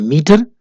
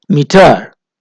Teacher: अगर हम कहते हैं मीटर तो इसमें मी स्ट्रेस है, टर अनस्ट्रेस्ड है। और इसी तरीके से अगर हम टर को स्ट्रेस्ड करें तो ये हो जाएगा मीटर, और मीटर जो है ये सही नहीं होगा, ये गलत होगा।